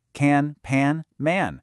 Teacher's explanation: For words that end in an or am, that a sound actually changes just a tiny bit. It gets a little more nasal.